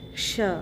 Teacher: यहाँ पे श्री शब्द आप कहते हैं तो श्री से श्रु और उसमें री लग गया है, स्त्री, और णु शृणु, देव प्रवक्ष्यामि प्रवक्ष, क्षत्रिय वाला श है आधा, बहुत लोग छ पढ़ते हैं, छाता वाला छ, लेकिन ये क्ष है, क और मूर्धन्य श से मिलकर बना हुआ है। ये क्षत्रिय वाला कक्षा वाला श है, इसको सही पढ़िएगा क्ष।